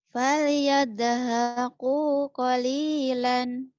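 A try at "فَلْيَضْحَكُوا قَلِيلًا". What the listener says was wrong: Sudah bagus tapi doanya jangan jadi dal. Jadi caranya kayak orang mau kentut, mau buang angin tapi ditahan. Anginnya nggak keluar nih. Jangan diyedekan.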